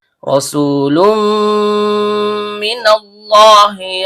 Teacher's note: Karena lam-nya berharakat tanwin bertemu dengan mim yang keluar dari bibir, maka terjadi hukum bacaan idgham bigunnah kamil. Bunyi tanwin-nya atau bunyi n-nya dilebur ke huruf mim disertai dengung yang sempurna. · Ra ujung lidah bertemu dengan langit-langit bagian belakang. Karena ra-nya berharakat fathah, maka hukum bacaannya tebal atau tafkhim.